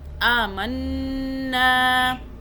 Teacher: یہ دیکھیں الف کے اوپر کھڑا زبر، اس کو ہم 1 الف کے برابر کھینچیں گے. آمنا، نون پہ ہم نے غنہ بھی کیا اور نون کی 2 مرتبہ آواز بھی بنائی. ایک پچھلے والے میم سے بنائی نون کی آواز، دوسری اوپر نون کی زبر سے بنا دی.